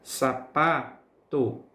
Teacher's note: Então, a sílaba tônica é a sílaba pá